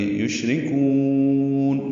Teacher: یشرکون، شین ساکن پہ ہمس ہے، تفشی ہے، شین میں آواز منہ میں پھیلتی ہے، سانس جاری رہتی ہے، را باریک کر پڑھیں گے، کاف کو لمبا کریں گے.